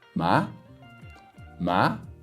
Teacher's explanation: it's just quick and it's rising · The second tone we call the unsure tone. So it starts at your mid-range and goes up to first tone level. So think about this as saying, huh?